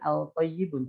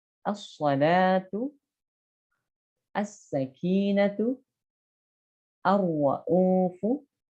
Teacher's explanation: Itu adalah huruf-huruf yang memang termasuk idgham syamsiyah sehingga alif lamnya tidak jelas terbaca. Artinya dimasukkan langsung ke huruf berikutnya setelah alif lam dan ditasydidkan.